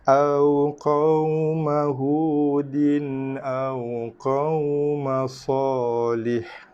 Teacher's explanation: Waw mati sebelumnya baris atas. Maka waw tu wajib dibaca dengan lin lunak. Tandanya ada baris mati ataupun ada tanda mati di atas huruf waw.